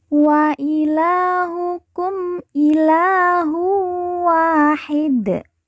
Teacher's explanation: la kita baca panjang dua harakat karena di atasnya terdapat Alif kecil